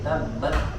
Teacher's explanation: Ditahan suaranya di makhraj huruf ta, tabbat, kemudian keluarkan hamsnya sedikit.